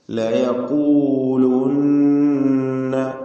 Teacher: ഖാഫിന് തഫ്ഹീം, അപേക്ഷികമായ ദമ്മ നൽകപ്പെട്ട അവസ്ഥയിലുള്ള തഫ്ഹീം.